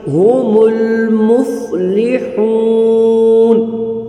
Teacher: وَأُولَئِكَ هُمُ الْمُفْلِحُونَ، اب یہاں پر دو ہا آ گئی، ایک چشمی ہا ہے اور ایک مفلحون میں حلوہ ہا ہے، تو جو چشمی ہا ہوگی وہ ہم نکالیں گے سینے سے، اور جو حلوہ والی ہا ہے مفلحون کی وہ ہم اس کو ادا کریں گے حلق سے